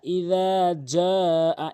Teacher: জালটি উচ্চারণ করতে হবে জিহ্বার আগা দাঁতের আগা থেকে